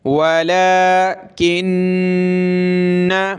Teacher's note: ولیکن، واو زبر و، لام کھڑا زبر لا، ایک الف کی لمٹ میں کھینچیں گے لا کو